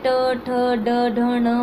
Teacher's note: आप वो बोल के देखना कि जैसे ट ठ ड ढ ण वाले शब्द हैं, वो कहीं ना कहीं हमारी जीभ जो है वो ऊपर की तरफ छूती है हमारी मूर्धा को।